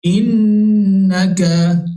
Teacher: nun bersabdu wajibal gunnah, baca dengan dengung kadar dua harakat